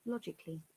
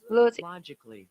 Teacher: We say law and they say la.